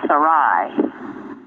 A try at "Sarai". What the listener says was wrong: It's Sarai. It's a short I.